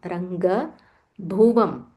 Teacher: Ga is normal ga, it's not Mahaprana.